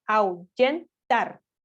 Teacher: nuestro acento prosódico recae en la última posición